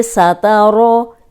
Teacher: سین جو ہے سیٹی والا ہے، تا باریک ہے